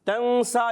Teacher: سین پر کھڑا زبر ہے، ایک الف کھینچیں گے